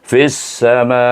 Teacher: berakhir dengan hamzah maka kita baca dengan mad wajib muttasil dengan enam harakat. Eh ya dengan enam harakat bacaannya bezanya itu eh fisama berakhir dengan hamzah.